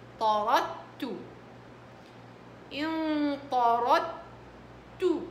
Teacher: طيب طارد هي دال هنا، بعدين تاء، الدال من جنس التاء، أدغمت بالتاء فصارت طاردت